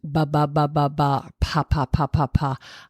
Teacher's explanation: you start with these what we call bilabials. The two lips are coming together